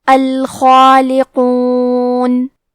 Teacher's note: کیونکہ اس کے پہلے حرف الخاء حروف التفخیم میں سے ہے، تو ہمیں مد الف کو بھی بھاری آواز میں ادا کرنا ہے